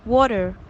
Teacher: pronouncing an alveolar flap instead of the plosive dental t or the aspirated t. This change occurs when T is at an intervocalic position, the first vowel being stressed, as in water.